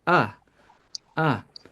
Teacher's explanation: it's very soft uh uh because there is no stress right this is found in unstressed syllables